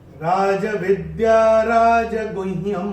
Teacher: पहले चरण में य के ऊपर अनुस्वार जो आ रहा है चरण की समाप्ति पे आ रहा है। चरण की समाप्ति पे जब आएगा अनुस्वार तो उसका उच्चारण केवल और केवल म ही होगा।